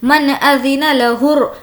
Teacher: والملائکۃ صفا لا يتكلمون إلا من أذن له الرحمن وقال صوابا. من یہاں پر حرف حلقی نون ساکن کے بعد حمزہ ہے ظاہر کر کے نارمل پڑھیں گے